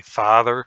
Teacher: if you're from Wisconsin and you say father it's a pretty front vowel